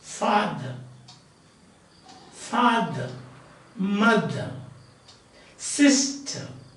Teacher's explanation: First syllable is stressed, second syllable is unstressed. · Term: trochee